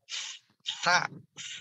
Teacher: Nah, ada hembusan nafas ya, bukan desisan.